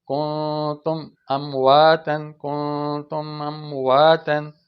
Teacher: میم کو ادا کرتے ہی آگے حمزہ کی آواز پیدا ہو جائے گی · میم پہ قلقلہ بھی نہیں ہو، اور تم آ سکتہ بھی نہ ہو